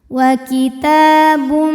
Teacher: Ta hukumnya adalah mad tabi'i muqaddar karena huruf ta berbaris fathah panjang, maka huruf ta ini kita panjangkan 2 harokat